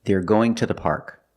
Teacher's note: we pronounce it as ta when two is after a consonant and it's not stressed